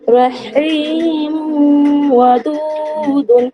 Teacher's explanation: তানবিনের পর ইদগামের অক্ষর বা গুণার অক্ষর অ এসেছে, তাই এখানেও এক আলিফ পরিমাণ গুণা সহ পড়তে হবে।